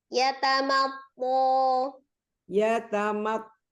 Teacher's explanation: hati-hati di thnya tebal tapi mimnya jangan ngikut tebal